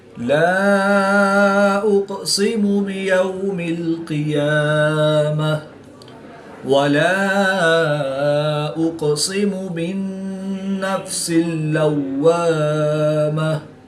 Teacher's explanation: قاف ساکن ہے تو یہاں پر قلقلہ صغرا کر کے پڑھیں گے